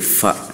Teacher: bibir bawah bertemu dengan gigi seri atas. Jadi bibir bawah ini bertemu dengan gigi seri atas ini. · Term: huruf fa